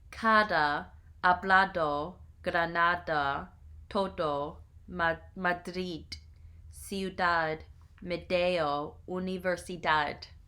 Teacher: at the end of a word or between two vowels, it has a muted sound like the in the word although